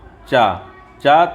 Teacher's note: तालव्य है कैसा है तालव्य है स्पर्श वर्ण है